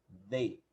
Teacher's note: Então, vai falar D. Você vai falar como se fosse falar DE, só que com a língua no meio dos dentes. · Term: TH